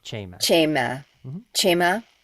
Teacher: the emphasis is always on the first syllable. So cha cha cha.